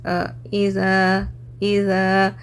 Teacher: जब ज़ा में अदा करूँ ज़बान की टिप थोड़ी सी बाहर आती, इज़ा, ऐसे जेड से नहीं अदा होता, इट्स डिफरेंट, इस नरमी से अदा होता, ज़ा नरम हरूफ है। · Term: ज़ाल